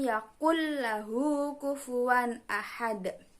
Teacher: Jadi langsung dimasukkan kepada lamnya tanpa disertai dengungan. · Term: idgham bilaguna